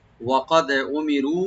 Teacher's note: কফটাকে deep করে তাহলে একটু কলকলা করতে হবে